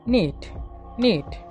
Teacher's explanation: Alveolar, tip of the tongue and teeth ridge are involved. Nasal, soft palate kept lowered. Airstream passes through the nose. The sound is voiced.